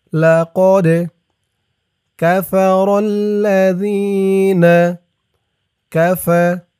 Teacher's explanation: এই দালটা কলকলার হরফ ধাক্কা দিয়ে পড়তে হবে